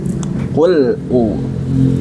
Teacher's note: kalau bainiyah atau tawassut pada huruf lam itu, dia itu terdengar jelasnya di awal aja, ketika awal-awal kita menyentuh makhraj huruf lam. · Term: sifat bainiyah